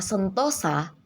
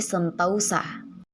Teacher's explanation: Perubahan yang terjadi di sini terdapat pada bunyi vokal tunggal o menjadi bunyi vokal rangkap au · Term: diftonisasi